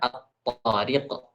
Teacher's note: Kita idghamkan lam matinya ke dalam ta, maka jadilah at-tariq.